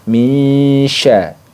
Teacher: bunyi nun sukunnya ini disamarkan ke makhrajnya dan sifatnya dari shin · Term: ikhfa hakiki